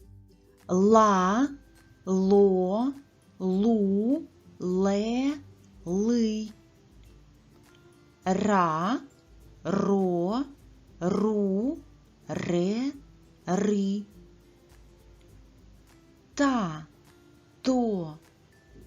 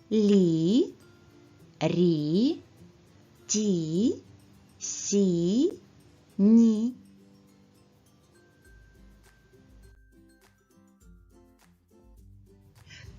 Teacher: голосний звук і робить приголосних друзів добрішими привітнішими м'якшими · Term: м'які приголосні